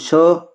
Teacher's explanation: श तालु जीवा से ही बोला जाता है